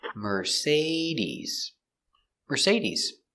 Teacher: Mercedes, Mercedes, the stress is on the say.